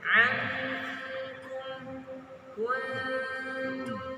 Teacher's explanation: Ainnya dulu dipanjangkan, enggak. Tapi yang dipanjangkan adalah gunnahnya, yaitu nunnya.